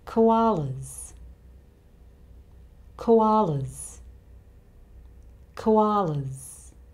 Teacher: The sound before the plural S is a vowel sound, the schwa sound, so the plural S here sounds like a Z. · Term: Z sound